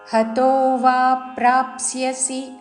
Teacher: సి హ్రస్వము దాని మీద ఆఘాత